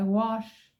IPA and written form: wɒʃ (wash)